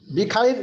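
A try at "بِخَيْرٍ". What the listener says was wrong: বিখাইরিন, বিখাইরিন না বললে ভুল হয়ে যাবে। বিখাইরিন, রিন, ডবল জের আছে।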